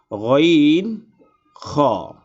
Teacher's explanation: হা কণ্ঠনালী অথবা গালার মধ্যখান থেকে এই দুইটি হরফ উচ্চারিত হয় তিন নাম্বার মাখরাজ হলকের শেষ হইতে উচ্চারিত হয় গাইন খ